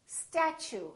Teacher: So the T, U sound like ch. So it almost sounds like chew.